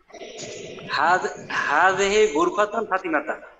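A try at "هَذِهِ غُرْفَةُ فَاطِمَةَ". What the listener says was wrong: গুরফাতু ফাতিমাতা, মুজাব তানমিন হবে না, এক পেশ হবে, হাযিহি গুরফাতু ফাতিমাতা, ফাতিমাতা এটা আবার জের হালতে কেন জবর হলো কেন, কারণ এটা এটা কি গরে মুনসারিফ মহিলা এজন্য ফাতিমাতা না হয় ফাতিমাতা হলো, হাযিহি গুরফাতু ফাতিমাতা জি।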